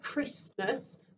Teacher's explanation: you can't hear that t sound but it is definitely in there